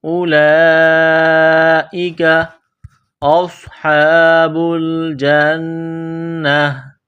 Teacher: صاد میں سیٹی کی آواز پیدا کرنی ہے، صاد کو موٹا کرنا ہے